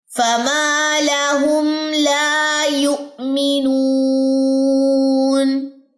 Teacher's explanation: الف مدہ کا، 2 سیکنڈ لمبا کریں گے · واؤ کی ساتھ جوائننگ کرتے ہوئے نون لمبی ہو جائے گی 2 سیکنڈ کے لیے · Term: واؤ مدہ